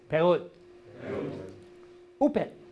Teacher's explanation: to hold the T at the end, don't release it